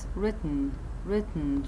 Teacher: so the compressed air explodes out through the nose. راح يصير الاكسبلوجن من خلال الأنف.